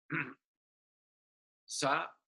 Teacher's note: actually the tongue twist backwards and you have sa which is a small hissing sound